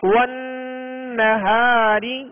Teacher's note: باریک باریک پڑھیں گے، اس لیے کہ را کے نیچے زیر ہے